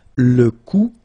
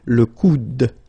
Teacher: you don't insist on this final e, it only gives you the sound of d at the end